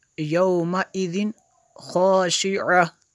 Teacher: خا حروف حلقی میں سے ہے تو یہاں پہ جو ہے غنہ نہیں کریں گے